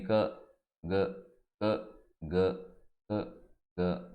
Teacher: కా మరియు గా కంఠం ప్లేస్ నుంచి మనం ప్రొనౌన్స్ చేస్తాము. అందుకని దగ్గరలో ఉంటుంది కాబట్టి ఇక్కడ మనం కానీ దూరంగా నిల్చుకొని క గ క గ క గ అని చెప్పామంటే ఆ ఎదురుగా ఉండేటువంటి వ్యక్తి కా చెప్పాడా గా చెప్పాడా అర్థం కాదు, అంత దగ్గరలో ఉంటాయి.